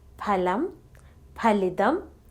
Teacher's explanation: the Air Stream coming from the lungs is stopped by pressing the lower lip against the upper then parting of the lips with a strong force the extra puff of air is released